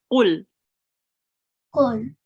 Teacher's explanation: Now qaf comes from your throat.